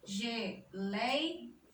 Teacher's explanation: Nas paroxítonas não são. Geleia, paroxítona também, com ditongo aberto